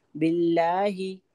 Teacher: लफ्ज अल्लाह को हम बारीक पढ़ेंगे